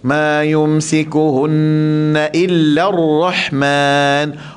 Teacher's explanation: pastikan ra tu tebal, ha tu ha halqum ataupun di wastal halqi ar-Rahman. Jangan Rahman bunyi dengan ha dada, okey?